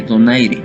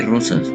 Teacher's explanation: puede representar, según la posición en la que aparezca, el fonema vibrante simple de donaire y múltiple de rosas